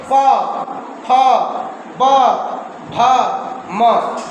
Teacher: प का उच्चारण करने में आप देख लीजिए दोनों ओठ सट रहा है।